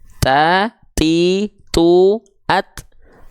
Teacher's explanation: Dia punya sifat hams tapi ternyata kadarnya Hanya berupa perecikan-perecikan nafas saja